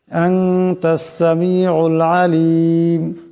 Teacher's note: নুন সাকিনের পর তা আসছে, ইকফা হয়ে যাবে, ইকফার একালে পরিমাণ গুণনা হবে।